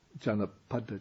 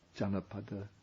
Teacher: this is a word without a long vowel, without a double consonant. Janapada. I think that's on the first syllable.